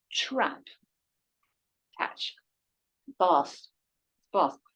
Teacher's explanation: Do bath and trap have the same vowel? No, not in London.